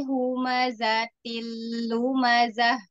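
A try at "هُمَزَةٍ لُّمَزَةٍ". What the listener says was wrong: Sekarang zainya. Z-nya yuk diperjelas. Coba diperjelas lagi ya, Z-nya. Terus berarti huruf zai. Kemudian huruf lam, jangan terlalu ditekan ya.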